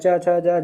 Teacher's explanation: तालव्य यानी कि जो तालु से बोले जाते हैं।